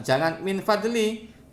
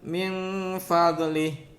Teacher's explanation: Ada samar itu minnya disamarkan ke huruf fa. Jadi ada dengungnya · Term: ihfa